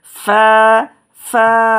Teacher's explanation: ফা উচ্চারণ হবে আপনার উপরে 2 দাঁতের আগা আছে না, ওই নিচের ঠোঁটের পেটের সাথে লাগিয়ে দিবেন।